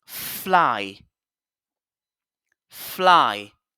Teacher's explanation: les dents supérieures sont sur la lèvre inférieure et puis je siffle de l'air